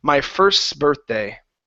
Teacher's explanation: that T can kind of hide itself a little bit because it's surrounded by two consonants